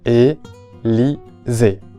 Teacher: In Élysées, both E are closed E. Élysées. Champs-Élysées.